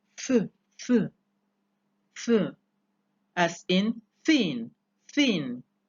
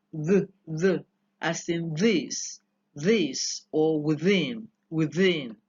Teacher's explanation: as a passive articulator you have Upper Front Teeth the adjective for it is Dental